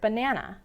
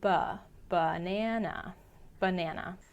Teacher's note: the relaxed uh sound that you say quickly under your breath